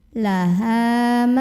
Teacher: Ha mad tabi'i karena ada alif yang sebelumnya didahului huruf berbaris fathah, maka cara membunyikannya, ha ini kita panjangkan 2 harokat.